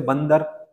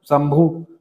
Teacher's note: अनुस्वार कैसा होगा? ध्वनि निकलेगा नाक से, ठीक है, स्वर के बाद आएगा, और व्यंजन वत ध्वनि बोलते हैं इसको, ठीक है।